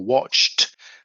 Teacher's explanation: the actual ED is pronounced with a T. So you knock off the E and then you have a T sound at the end.